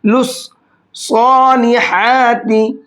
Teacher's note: لام کو صاد میں ملا کر کے پڑھیں گے ، لس صالحاتی، اور صاد کو موٹا کر کے پڑھیں گے،